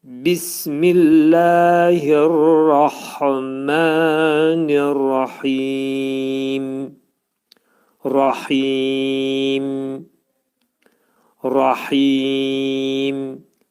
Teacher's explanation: ağız yumulur və mim hərfi buna deyirlər şəfəvi, dodaq hərfi olur · Mimi vəqf eləyəndə, demək mimdən sonra gələn kəsrəni atırıq və mimin üstündə sükun peyda olur